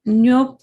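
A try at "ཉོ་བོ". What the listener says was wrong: No. hold your tongue. Don't let your tongue touch the top of your mouth. No.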